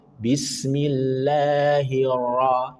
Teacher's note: Karena ro punya sifat takrir tapi sekali saja. Ro ra ro ra ro ra ro ra ro.